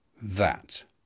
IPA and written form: ðæt (that)